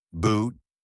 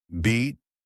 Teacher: Tight lips for boot, spread for beat.